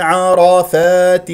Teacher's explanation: عين مرققه مستفه من وسط الحلق والراء هنا مفخمه لانها مفتوحه ع را لا تقول عر ع